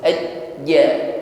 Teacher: jangan diiringi pengucapan huruf ja dengan nafas yang berhembus